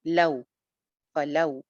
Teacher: جلدی سے اس کی ادائیگی ہوگی، اس کو ہم نے لمبا کر کے نہیں پڑھنا جیسے ہم واو مدہ کو پڑھتے ہیں. جلدی سے ادائیگی ہوتی ہے. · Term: واو لین